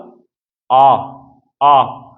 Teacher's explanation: फिर मैंने बोला आ, आ, तो आ जो है ये कैसा है, पश्च है, क्योंकि इसमें ध्वनि जो है वो गले से आ रही है, जीभ में इसमें किसी प्रकार की कोई हलचल नहीं हुई है